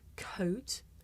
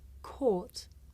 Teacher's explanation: it may be difficult to tell the difference between the diphthong O and the long vowel OR